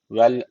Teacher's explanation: Öncesindeki harf üstten bağlandığı için ra harfi kalın okunacak.